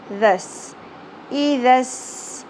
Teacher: ذال کو نرمی سے ادا کیا جاتا ہے، سیٹی اور شدت نہیں ہونی چاہیے۔ ذال سین زبر ذس، ای ذس، سین میں سیٹی کا ایلیمنٹ کلیئر ہونا چاہیے۔